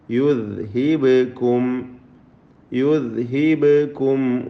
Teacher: പദത്തിൻ്റെ അന്ത്യത്തിലെ സാക്കിന മീം ഇൽഹാർ ഷഫവി നൽകി മണിക്കാതെ വെളിവാക്കണം. വാവിന് മുമ്പിൽ സൂക്ഷ്മത വേണം. · ദാലിന് ഖൽഖല വരാതെ സൂക്ഷിക്കുക. ബായിന് ഖൽഖല സുഗ്റ നൽകി ശബ്ദം ഹറക്കത്ത് പോലെ വ്യക്തമാക്കുക